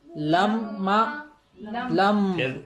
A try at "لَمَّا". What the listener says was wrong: پھر نون کی آواز آئی. لما نہیں لما.